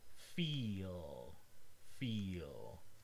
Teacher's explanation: The tip of your tongue is not touching the alveolar ridge. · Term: dark L